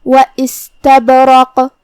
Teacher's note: یہاں با ساکن ہے تو با کا حکم ہوا قلقلہ. قلقلہ کا معنی ہے حرف ساکن کو ہلانا